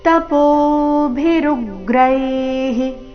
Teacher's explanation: ವಿಸರ್ಗದ ಉಚ್ಚಾರಣೆ ಹಿ ಎಂದು ಬರಬೇಕು